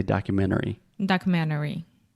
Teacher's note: If I'm speaking fast, I will almost remove the T. It's more of a stop T, and I do not say documentary.